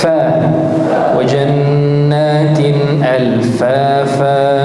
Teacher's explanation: Huruf yang keluar dari syafatain diantaranya adalah huruf fa. Namun fa ini dari dua gigi atas, dua gigi seri atas ini, ats-tsanaya tadi yang kita sebutkan, bertemu dengan batnu syafah.